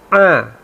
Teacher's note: tempat keluarnya udara itu bergetar di tenggorokan bagian tengah, bukan di hidung